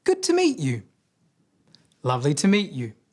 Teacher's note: you would have heard them pronounce to as ta. The sound you hear there is ah. We call this a schwa sound